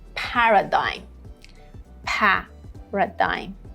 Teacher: Here, the first syllable has the main stress.